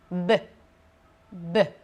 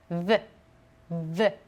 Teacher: La réponse est la prononciation bilabiale. Qu'il s'agisse du B ou du V, en espagnol, on va toujours prononcer B.